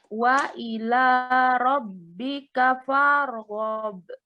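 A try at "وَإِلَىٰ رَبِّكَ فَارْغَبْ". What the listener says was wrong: Nah, jangan terlalu panjang. Farghab bukan. Farghab langsung. Farghab. Benar?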